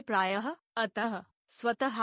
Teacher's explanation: विसर्ग का उच्चारण ह के समान ही होता है।